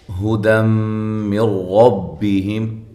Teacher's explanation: یہ دم پہ نون تنوین کا ادغام ہے مع الغنہ، ایک الف کے برابر غنہ کیا جائے گا